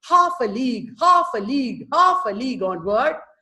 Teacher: it is almost like marching because stressed followed by 2 unstressed. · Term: dactylic